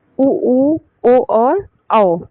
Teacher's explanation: जिन वर्णों के उच्चारण में होठ का आकार एकदम गोल हो जाता है उसे वृत्तामुखी स्वर कहते हैं। जैसे उ ओ और औ।